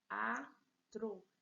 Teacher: Vejam que o encontro vocálico aqui, na separação de sílabas, eles ficam em sílabas diferentes. Se eles se separaram, eu tenho hiato.